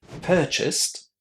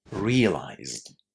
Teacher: Purchased is pronounced with the t sound at the end, while realized is pronounced with the d sound there.